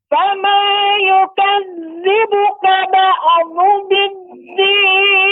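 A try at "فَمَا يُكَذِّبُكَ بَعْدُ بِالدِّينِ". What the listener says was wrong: Ya, untuk ba'du ya. Fama yukadzibuka ba'du biddin. Yang benar, ain ini adalah ba', tidak ba'a. Tidak memantul seperti fama yukadzibuka ba'du ba'du. Nah, ini bukan seperti itu, tapi dia lembut. Fama yukadzibuka ba'du biddin tidak ba'a.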